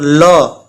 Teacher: पार्श्विक यानी जीभा जो है ल बोलने पर ऊपर जाकर सटती है तलवे में, और तलवे में सट करके उसके बगल से हवा निकलती है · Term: पार्श्विक व्यंजन